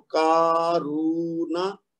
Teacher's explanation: را کو بھی 2 حرکت دیں گے، لیکن نون کو 1 حرکت دیں گے کیونکہ اس کے اوپر زبر ہے خالی. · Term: الف مد